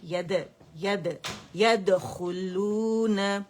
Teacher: دال میں قلقلہ ہے باریک